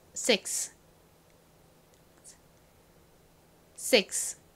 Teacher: 이 S의 뒤에 자음이 아니라 이렇게 I와 같은 모음이 오면요. S가 좀 세게 발음 나요. 그래서 그냥 six보다는 거의 six 이렇게 쌍시옷처럼 발음 납니다.